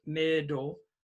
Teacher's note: Middle, stress on the first vowel, it's short